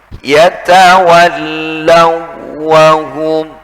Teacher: Tidak boleh dibaca ada gunnahnya, ada dengungnya. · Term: tanpa gunnah